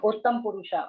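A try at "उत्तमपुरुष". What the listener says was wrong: Uttama Purusha, not Uttam Purusha.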